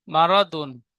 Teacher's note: রর উপরে জাবার এসেছে তাই রকে পুর করে পড়তে হয়